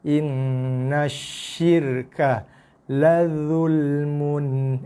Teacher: Ini izhar, jelas bunyi mun tanpa dengung.